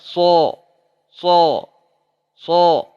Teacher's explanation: Sod diangkat pangkal lidahnya bahkan lengket ke langit-langit. Kalau diangkat saja so, kalau sampai lengket so.